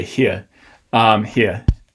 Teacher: native english speakers will produce them with a schwa off glide so like if you try to say here it's hard to